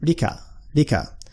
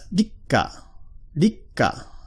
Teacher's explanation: The small tsu in the middle just doubles up the consonant sound that follows it.